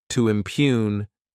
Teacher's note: this word has 2 syllables, and the stress is on that second syllable.